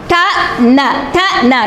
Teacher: நுனி நாக்கும் நுனி அன்னமும்